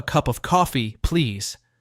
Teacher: Notice how coffee, please, has a natural pause before please. Copy that pause when you shadow.